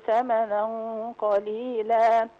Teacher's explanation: إخفاء حقيقي لأن التنوين جه بعده حرف القاف وهنا الغنة تبقى مفخمة لأن القاف من حروف التفخيم